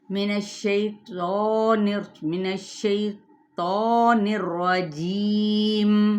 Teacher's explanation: یا سے پہلے زیر ہے تو 2 سیکنڈ کے لیے ہم نے اسے لمبا لازمی کرنا ہے، یا پھر 4 حرکات یعنی توسط کر لیں اس پر.